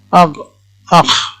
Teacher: কণ্ঠনালীর মধ্যভাগ থেকে উচ্চারণ হচ্ছে। 4 নম্বর, কণ্ঠনালীর উপরিভাগ থেকে উচ্চারিত 2টি হরফ, এই দুটি হলো গইন খ